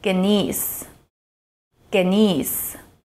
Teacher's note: pronounced with a hard ‘g' sound and a long ‘e’ sound